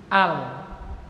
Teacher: lam itu makhrajnya adalah ujung lidah di langit-langit atas, Pak, di atas gusi dikit